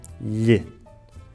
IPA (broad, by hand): ʎ